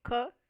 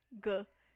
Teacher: K é desvozeado, não tem vibração das cordas vocais, e G é vozeado, tem a vibração das cordas vocais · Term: consoantes velares